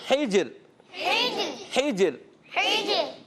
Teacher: جیم میں قلقلہ کریں گے، ہا کی ادائیگی کلیئر حلق کے درمیان والے حصے سے، اور جیم میں قلقلہ کرتے ہوئے اب یہاں پر پیارے بچوں را کو پر ادا کریں۔